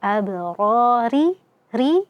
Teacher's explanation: ro-nya kita baca tipis ya, tarqiq karena kasrah